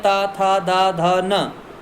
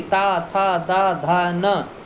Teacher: ता वर्ग को बोलें तो जीभ सीधी दांत पे लगती है।